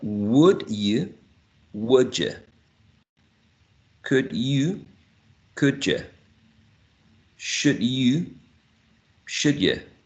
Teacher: we're going to see the combination of d plus y, and there will be coalescence